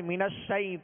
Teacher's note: من الشیء، یہاں یا لین ہے، یا ساکن سے پہلے زبر ہے، لہذا یا لین کو نرمی کے ساتھ ادا کریں گے۔